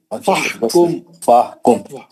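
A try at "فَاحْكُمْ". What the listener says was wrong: फाहुकुम अलिफ नहीं पढ़ रहे, मध्य असली नहीं हो रहा।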